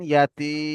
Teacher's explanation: ইয়া মাদ্দাকে একালিপ পরিমাণ টান দিয়ে পড়তে হয়